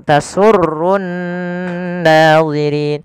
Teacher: Pada lafal di sini ada nun berharokat tasydid, maka ya kita baca dengan bacaan gunnah, ditahan suara nunnya. Tasurrunna, tasurrunna, jangan langsung tasurrun nadhirin, tapi tahan dulu.